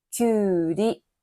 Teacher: きゅうの母音はうです。その次には同じ母音のうがありますから、きゅうりと伸ばして発音をします。